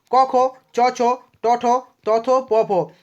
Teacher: এদের উচ্চারণ করার সময় কণ্ঠস্থ যে স্বরতন্ত্রের কম্পন সেই কম্পনটা হয় না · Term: অঘোষ বর্ণ